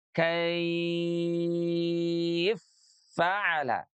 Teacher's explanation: Tapi kalau dalam konteks riwayat yang lain, dua huruf yang berharakat idgham m kabir ya itu juga dibacanya lebur. Jadinya fa yang pertamanya disukun ditasdid kepada fa yang kedua